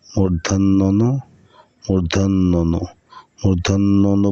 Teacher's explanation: বর্ণটি মূর্ধা থেকে উচ্চারণ হয় এজন্য এর নাম মূর্ধন্য ন